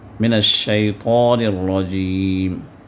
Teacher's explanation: الشیطان کے اندر طا کو پر کرنا ہے